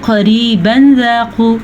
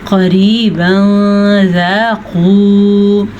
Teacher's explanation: तनवीन के बाद भी रूफ़ इख्फा में से कोई हर्फ आ जाए तो भी तनवीन की आवाज़ को छुपाते हैं। वैसे इसको हम पढ़ते हैं क़रीबन ज़ाक़ू, लेकिन इख्फा होने की वजह से हम इसे पढ़ेंगे क़रीबन ज़ाक़ू।